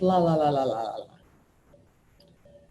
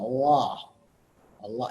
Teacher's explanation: You'll notice the first L, the light L, is the one we normally think of with la la la la la la. The dark L is almost a swallowed sound.